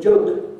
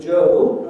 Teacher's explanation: In other words, you make the O shorter in the word joke than you make it in the word Joe